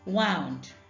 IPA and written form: wɑʊnd (wound)